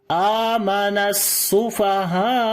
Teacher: آخر میں آواز تھوڑی سی اونچی ہو گئی, نبر اس کو بولتے ہیں. اور یہ کیوں ہوئی ہے, کیونکہ حمزہ کی آواز ختم نہ ہو جائے, حمزہ کو ظاہر کرنے کے لیے ہم نے یہاں پر آواز کو اونچا کیا.